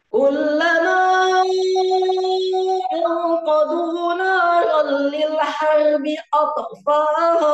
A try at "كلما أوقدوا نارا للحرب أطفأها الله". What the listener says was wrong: تسكت، لا تقل أطفأ أطفأ، لا لا تسكت، أطفأها أطفأها، أما أن نقول أطفأها لا، هذا لا ينفع. أطفأها الله، أطفأها الله.